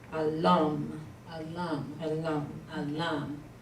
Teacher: It's got to have the accent on the second syllable, so it'd be alam.